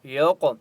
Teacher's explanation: قاف کے اوپر قلقلہ ہوگا اور قاف مستعلیہ میں سے اس لیے قاف کو موٹا پڑھیں گے